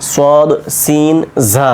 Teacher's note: উচ্চারণ জিহ্বার আগা দাঁতের গোড়ার সঙ্গে লাগিয়ে হচ্ছে সদ সিন ঝা এই তিনটা উচ্চারণ জিহ্বার আগা নিচের দাঁতের গোড়ার সঙ্গে লেগে থাকছে